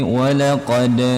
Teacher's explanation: Walaqad itu huruf qalqalah sughra ya teman-teman, di bagian huruf dal sukun.